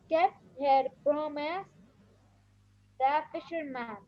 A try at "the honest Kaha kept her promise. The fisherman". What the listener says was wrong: No, kept her promise. So you stop at the period.